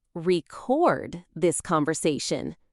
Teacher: But I need to record this conversation with stress on the second syllable